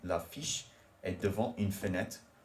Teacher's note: So in this instance, there is the T at the end of devant does not become pronounced, even though the word after devant starts with a vowel.